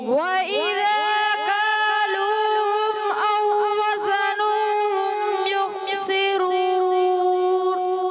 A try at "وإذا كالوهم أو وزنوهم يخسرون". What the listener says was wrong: تھوڑا اور اسپیڈ کو کم کریں گے، ٹھیک ہے نا؟ ترتیل سے پڑھ رہے نا. ورتل القرآن ترتیلا، اور قرآن پاک کو خوب ٹھہر ٹھہر کر پڑھو. تو جتنا آپ رک کے پڑھیں گے اتنا خوبصورتی پیدا ہوئی گی. وَإِذَا كَالُوهُمْ أَوْ وَزَنُوهُمْ يُخْسِرُونَ. وَإِذَا كَالُوهُمْ أَوْ وَزَنُوهُمْ يُخْسِرُونَ.